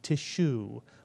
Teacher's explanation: The tuf with the shva is like a grace note, tishu, leading into the first syllable, shu.